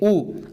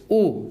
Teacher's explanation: जिनके उच्चारण में जो आपका ओठ है, जो ओठ है वो गोलाकार हो जाएगा या वृत्त की तरह हो जाएगा, यानी कि गोल हो जाएगा। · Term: वृत्त मुखी स्वर